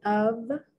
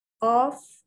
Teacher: the F is pronounced like a V